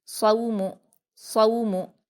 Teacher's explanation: सौमु, सौद पर वावलीन है, इसको हम मारूफ पढ़ेंगे, नर्म आवाज़ के साथ जल्दी पढ़ेंगे और सौद को पुर पढ़ेंगे। सौ, मीम पर हरकतें जल्दी पढ़ेंगे, सौमु, सौमु।